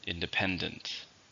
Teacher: stress on the third syllable